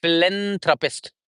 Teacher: That's how it's a soft th sound, and stress would be on len